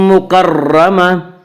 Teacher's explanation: فی صحف مکرمہ، مکرمہ کے را کو پر پڑھیں گے۔ اس کا قاعدہ یہ ہے کہ را مشدد متحرک کے اوپر، مشدد کہتے ہیں جس کے اوپر تشدید ہو، جس حرف پر تشدید ہو، اور متحرک کہتے ہیں اس حرف کو جس کے اوپر زبر زیر پیش ہو۔